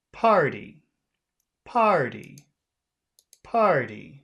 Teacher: add a high tone to the end, but we'll have to finish low.